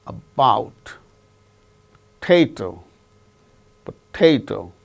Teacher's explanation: the second syllable gains stress